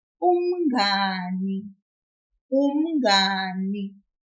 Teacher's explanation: We will pull the syllable nga, which is N-G-A. Just a little.